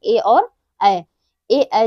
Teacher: ए ऐ जो है ये कंठ और तालव्य से उच्चारित होते हैं। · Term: कंठ तालव्य